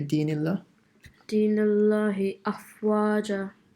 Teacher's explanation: Say the hamza a bit more. Hamza is from the bottom of the throat